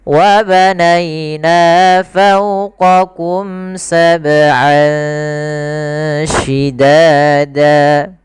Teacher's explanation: Kemudian lafal an ketemu shin. Ini ada bacaan ikhfa, yaitu kita samarkan suara an ya ke huruf shin. Jadi terdengar seolah-olah dia ada eng gitu ya, tapi bukan ang, tapi dia ikhfa.